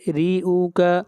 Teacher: را کو باریک پڑھیں گے، اور را کے نیچے زیر ہے